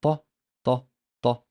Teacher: If you put your fingers on your bony part of your neck and try to pronounce the sound ta, ta, ta, it usually does not produce vibrations. And you cannot feel them. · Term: voiceless